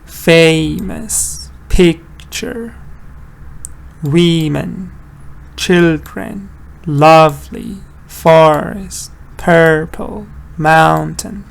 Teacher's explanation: All of them stressed on the first part. · All of them have the Dada stress pattern.